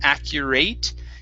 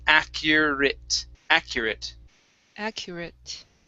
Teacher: the ate in this word is actually pronounced with a short i and a t so instead of accurate it's accurate accurate accurate good all right